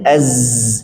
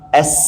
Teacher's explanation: Ini ada getaran as enggak ada getaran · zai jahar, sin hamas. Padahal satu makhraj dua-duanya. Tapi perbedaannya karena pita suara dekat atau terbuka.